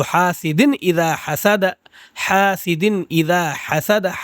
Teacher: اس نون کو ہم ظاہر کر کے پڑھیں گے، نہ کہ چھپا کے آؤں کر کے نہیں پڑھیں گے